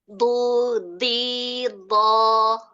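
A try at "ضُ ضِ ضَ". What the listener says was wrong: Bu-nya, jangan du. Ya, masih ada bibir, apa namanya, pipinya masih nyembung ya? Iya, kedengarannya masih nyembung di pipi yang kanan.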